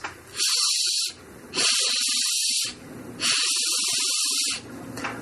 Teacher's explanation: the sort of 2/3 front part of my tongue is pushing close to where the hard palate comes down behind my top teeth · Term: E tongue position